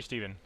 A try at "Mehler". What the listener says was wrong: the last name is pronounced mailer baylor not milo